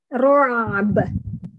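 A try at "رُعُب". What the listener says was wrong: iya tipis baknya ru'ab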